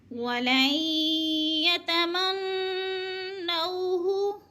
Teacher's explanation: نون ساکن کو نہیں پڑھیں گے، یا مشدد کو پڑھیں گے، یعنی نون کو یا میں مدغم کر کے پڑھیں گے، ادغام کریں گے۔